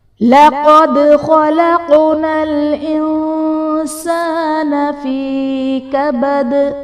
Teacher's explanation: لَقَدْ خَلَقْنَا الْإِنسَانَ فِي كَبَدٍ، لقد میں قاف حرف مستعلیہ ہے، پر پڑھا جائے گا۔ دال حرف قلقلہ ساکن ہے، یہاں پر قلقلہ خوب ظاہر کریں گے